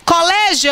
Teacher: o O é muito mais longo do que o I. Então, esse ditongo aqui, ele é crescente e não decrescente.